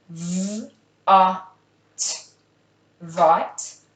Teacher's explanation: Vot has a short ah sound for the O.